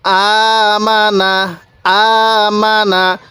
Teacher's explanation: মিম জবর মা নুন জবর না তাহলে আমানা আমানা স্মরণ রাখবেন আমি মিমের মধ্যেও টান দেই নাই নুনের মধ্যেও টান দেই নাই